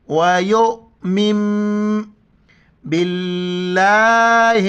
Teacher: جب بھی نون ساکن کے بعد با آ جائے تو پھر یہ میم میں تبدیل ہو جاتا ہے ، نون میم میں کنورٹ ہو جاتا ہے۔ واو زبر و،